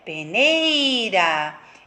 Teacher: o E e o I vão juntos, né? Se fundem, como se fosse uma vogal só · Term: ditongo